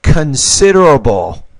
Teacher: You said considerable, but it's considerable. So the stress here is on the second syllable, not the first.